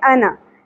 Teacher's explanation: اس الف کو نہیں پڑھنا صرف زبر پڑھنی ہے ٹھیک ہے انا نظیر مبین نون کے اوپر زبر ہے زیادہ